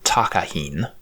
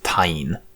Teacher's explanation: I'm struggling to decide how to handle this one cuz the protoform would have been takahin. If we say it cliticized early enough, then the k and the h could have just been skipped over.